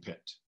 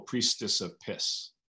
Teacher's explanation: this plosive this bilabial plosive in pit priestess and piss